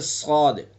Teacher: صاد کے اندر صفت استعلا ہے، یعنی اس کو پر کر کے پڑھیں گے صاد۔ اسی طرح سے ضاد کا مخرج، ضاد کا مخرج زبان کی کروٹ اور اوپر کی ڈاڑوں کی جڑ۔